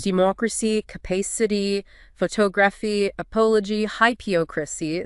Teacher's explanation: The stress jumps back one more syllable. It lands on the anti-penultimate syllable, the third one from the end.